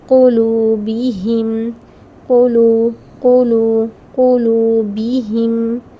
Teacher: لام کے بعد ہے نا واو ساکن، اس لیے اسے 2 کاؤنٹس کریں گے